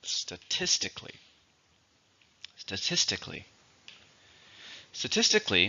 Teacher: four syllables stress is on the second